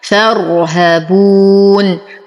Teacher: نصبر على الراء مع التفخيم